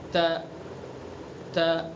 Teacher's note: زبان کی نوک کو ثنا علیہ کی جڑ پر لگائیں گے تو تا کو ادا کریں گے